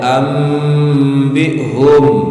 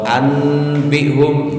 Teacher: nun sukun yang diikuti ba diubah dalam makhrajnya menjadi mim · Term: iqlab